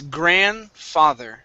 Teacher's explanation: So we do not want to pronounce the D here in the middle. It's grandfather.